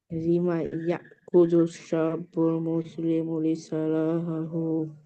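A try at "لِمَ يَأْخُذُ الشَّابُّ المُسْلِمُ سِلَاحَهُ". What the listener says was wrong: লি নাই তো, শুধু সিলাহাহু। মারুফ বলে না কেন? লিমা ইয়াখুযু শাবুল মুসলিমু সিলাহাহু,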